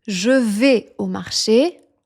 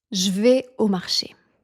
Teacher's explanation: When spoken, the E in je is almost never pronounced. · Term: contractions